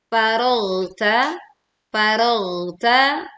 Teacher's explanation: tebalkan saat kita membaca ghain sukun dengan mengalirkan suaranya sehingga tidak memantul